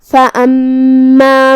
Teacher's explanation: کلمت فَأَمَّا میں یہاں میم پہ تشدید ہے تو 2 حرف کے برابر ہم میم کو پڑھیں گے